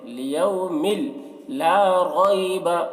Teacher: لیوم، یہاں پر تنوین کے بعد لام ہے حروف یرملون میں سے، تو تنوین کو لام سے ملا کر بغیر غنہ کے پڑھیں گے، اس کو ادغام تام کہتے ہیں۔